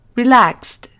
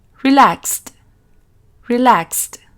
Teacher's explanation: S, s, porque no hay vibración en las cuerdas vocales. Entonces, al transformar este verbo en su pasado, vamos a pronunciar esa ed como una T.